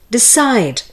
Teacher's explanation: the stress is on the second part of the word